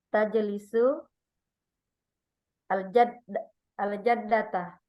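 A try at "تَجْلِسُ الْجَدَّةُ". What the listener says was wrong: Nggak boleh patah. Domah. Kalau sabtu itu domah.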